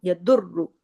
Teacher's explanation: दौत को हैवी करके पढ़ना है क्योंकि दौत 7 मोटे हुरूफ में शामिल है